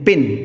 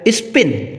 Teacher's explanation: प sound in पिन, aspirated and स्पिन, अनएस्पायरेटेड are allophones of the phoneme पा